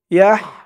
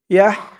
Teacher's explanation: হার উচ্চারণটা গলার ভেতর থেকে চিকুন হয়ে বের হবে